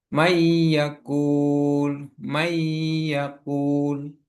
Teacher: Jika bertemu dengan huruf ya, nun, mim, dan wawu, nun sukun bertemu dengan ya dibaca mendengung · Dalam tajwid idgham terjadi ketika nun sukun atau tanwin bertemu dengan salah satu huruf yang enam atau huruf idgham. Maka bunyinya dilebur ke huruf berikutnya. Huruf huruf-huruf idgham itu ada enam, yaitu ya, ro, mim, lam, wau, dan nun. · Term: idgham bighunah